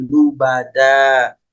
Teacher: bertemu dengan alif kemudian Diwa atau diberhentikan maka yang tadinya lubadan ketika berhenti pada kalimat ini menjadi lubada panjangnya dua harakat saja